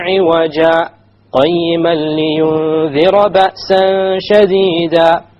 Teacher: I stopped. I didn't breathe in or out. I momentarily stopped and then I moved on. This is what is known as a sakta.